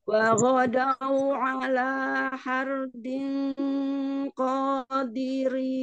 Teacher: Ra sukunnya ditebalkan juga samar ikhfanya.